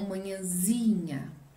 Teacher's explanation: Ali ele não perde o til, mas muda o lugar da sílaba tônica, certo? Não é mais o nhã, é o zi de novo.